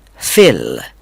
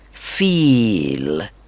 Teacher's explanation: फिल में इ sound इस्तेमाल होती है जबकि फील में ई लंग साउंड है